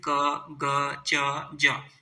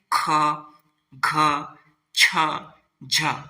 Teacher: का दूसरा और चौथा वर्ण जैसे कि ख घ छ झ इसमें क्या है श्वास ज्यादा तेजी से बाहर निकल रहा है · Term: महाप्राण